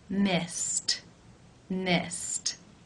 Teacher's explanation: the final infinitive sound is the S sound that is unvoiced so it is case 1 where the II D is pronounced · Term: T sound